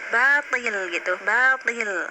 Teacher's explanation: hanya naik pangkal lidah sedikit karena posisinya kasroh to-nya ya